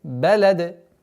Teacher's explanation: Итак, ла уqсиму бихадаль балад. Нужно обращать внимание, чтобы при остановке после ляма не появлялось удлинение. Бихадаль балад, лад, нет, балад.